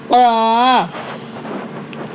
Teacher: நல்லா நல்லா தொண்டை நாக்கோடி வேர் பகுதி மேல போய் டச் ஆகணும் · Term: கப்